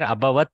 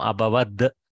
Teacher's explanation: Softening of the Takara to Dakara called Jastva.